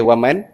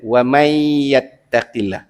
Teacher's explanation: Huruf nun ni masuk terus pada huruf ya.